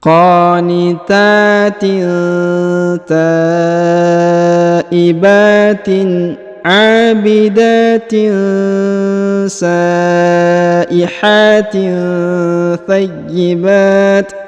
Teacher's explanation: Kemudian huruf H dipanjangkan 2 harokat karena terdapat alif kecil ya. Lalu tanwin in pada huruf ta bertemu dengan sa maka didengungkan dan disamarkan ya